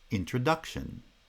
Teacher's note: Inside each foot, the first syllable is the strong syllable, so stress is placed on the first and the third syllables of the word introduction. Primary stress is on the third syllable because it's the strong syllable in the strong foot.